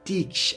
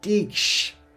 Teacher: Notice the stretching of that E sound is there, Tiksh, and we're joining it with the SH sound.